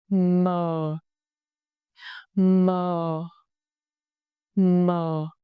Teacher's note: The initial consonant, m, our lip shake, both lips press together, then release with voice.